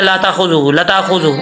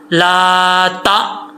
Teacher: हमज़ा साकिन जो है वो झटके से पढ़ा जाता है। यहाँ पर हमज़ा साकिन है, इसको झटके से पढ़ेंगे।